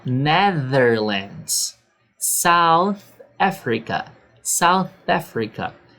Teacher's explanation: é como se você falasse o S com a língua entre os dentes